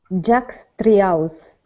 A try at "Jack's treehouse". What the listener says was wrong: Okay, now instead of saying three, give me a CHR. Remember, the TR is a CHR. Jack's treehouse. Okay, so almost you're saying three. so what you want to pronounce is tree.